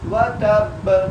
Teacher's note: کیونکہ با ساکن ہو گئی، وقف کی صورت میں با کو ہم نے ساکن کر دیا، اس لیے یہاں پر ہم نے قلقلہ کیا